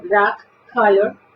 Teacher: Démonos cuenta que es una A que se convierte casi en una O